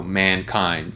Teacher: So both of the syllables in that word get stressed. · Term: both syllable stress, both syllables stress